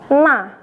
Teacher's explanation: hanya ujung lidah saja yang menempel pada gusi dari gigi bagian atas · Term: huruf na